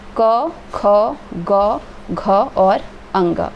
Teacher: क, ख, ग, घ और अंग, ये हम कंठ से बोलते हैं, इसलिए इसको कंठ्य बोलते हैं। और क वर्ग में ये आते हैं।